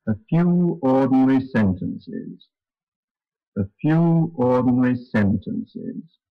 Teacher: those last two weak syllables are said on a very low note indeed very low as low as possible in